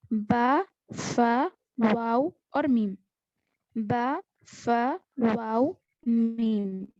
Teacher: बा, फा, वाव और मीम, ये 4 हुरूफ ऐसे हैं जो होंठों से अदा होते हैं। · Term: हुरूफ शफविय्या